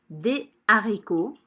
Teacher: Ici, je ne fais pas la liaison, je dis des haricots